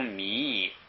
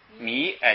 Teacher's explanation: 不要读米，就是不要三声，米哎就往上